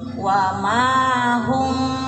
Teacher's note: Jadi nggak terlalu rapat bibirnya karena ifa ya, jadi samar. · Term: ifa syafawi